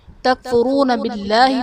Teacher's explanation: اس میں جلالت اللہ عز و جل کے لام سے پہلے زیر ہے تو یہاں پر اس میں جلالت اللہ عز و جل کے لام کو باریک پڑھا جائے گا